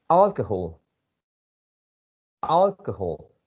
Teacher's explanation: so if you pronounce the word alcohol you have to stress the first syllable alcohol alcohol the second uh vowel sound is a schwa by